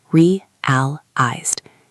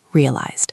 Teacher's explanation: It is three syllables. Realized. The emphasis is on the first syllable. Realized. And notice the past tense ending is a soft d sound.